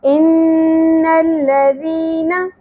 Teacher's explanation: اب ایک الف کے برابر کھینچیں گے ان الذی ان الذی نا زبر کو زیادہ نہیں کھینچنا